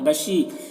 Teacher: بشی یہاں پر یا مدہ ہے، 1 الف کے برابر کھینچیں گے۔